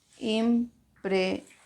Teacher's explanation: ¿Dónde está la mayor fuerza de voz? En ción. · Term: agudas